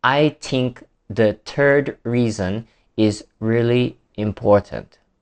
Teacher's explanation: the th sounds are produced as t and d, which is a common issue